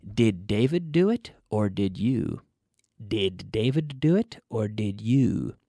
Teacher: your tongue stays in your mouth, touching the roof of your mouth behind your teeth. The tongue does not touch your teeth.